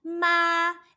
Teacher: The first tone is going to be even, but this time we put an M in front of it.